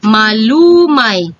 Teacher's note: walang impit sa huli at ang diin ay nasa ikalawang pantig mula sa huli or yung penultima Same lang po sila ni malumi ngunit si